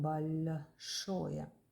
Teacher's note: in this word the letter L is softer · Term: soft sign